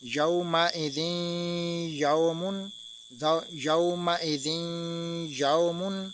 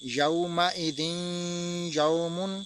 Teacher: ہم نے دو زیر کو نہیں پڑھا بلکہ ہم نے اگلے حرف کے ساتھ ملا کر پڑھا ہے